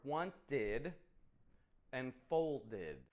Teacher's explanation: Id, which adds a new syllable on the end of the word